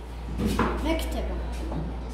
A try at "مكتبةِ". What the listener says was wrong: اكسر التاء. مكتبة. مكتبة.